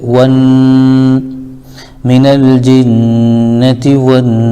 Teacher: زیر ہے تو تی، من الجنتی، واو پر زبر ہے لیکن الف لام کے بعد حروف شمسی میں سے نون آ رہا ہے، اس لیے واو کو ڈائریکٹ نون میں ملا دیں گے